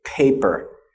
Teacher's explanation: you should be able to put your hand in front of your mouth and feel air when you say paper you should feel air against against your hand okay now let's